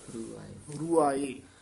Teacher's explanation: ਪਾਠ ਇਕੱਠਾ ਹੀ ਬੋਲਣਾ ਰੂਹ ਆਏ ਨਹੀਂ ਕਹਿਣਾ ਰੂਆਏ